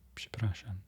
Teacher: It's very subtle, and then you have that rolled R in there as well, which is nice to hear.